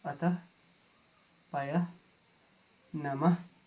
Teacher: विसर्ग स्वर के बाद आते हैं और इसका उच्चारण कंठ की सहायता से होता है।